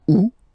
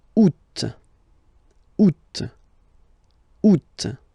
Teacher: And then here, two options, because, well, two options are acceptable in French. The first one, you don't pronounce the final T. Ou. Second one, you pronounce it.